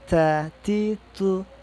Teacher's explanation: ujung lidah bertemu dengan gigi seri bagian atas · sifat yang melekat pada huruf ta itu Hames nafasnya mengalir Jadi kalau dimatikan pun tetap mengalir itu yang paling jelasnya kita